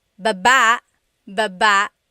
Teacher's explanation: Emphasis is on the second syllable.